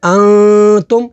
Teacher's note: نون ساکن کے بعد تا ہے تا حروف اخفا میں سے تو یہاں پر اخفا کریں گے یعنی غنہ کر کے پڑھیں گے